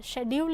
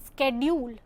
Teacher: American English pronounces the sound sk at the beginning of the word schedule